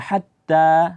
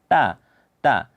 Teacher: huruf yang keluar dari ujung lidah berjumpa dengan pangkal gigi seri bagian atas